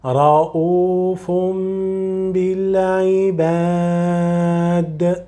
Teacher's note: don't forget always the ghunna and to prolong a little bit